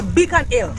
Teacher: them Jamaican them not pronounce them H when they got an H before the vowel